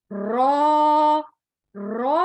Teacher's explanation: रॉ को पढ़ते हुए तकरार की आवाज आनी जरूरी होती है, और इसको मोटा पढ़ा जाएगा क्योंकि इसके ऊपर जबर या पेश जब आता है तो हम रॉ को मोटा पढ़ते हैं, और जब इसके नीचे जेर हो तो रॉ बारीक पढ़ी जाती है।